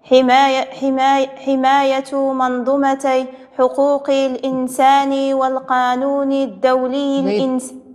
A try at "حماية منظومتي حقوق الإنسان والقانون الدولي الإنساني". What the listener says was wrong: جيد، غير تعاوديها لان ما بينتيش المد. حماية منظومتي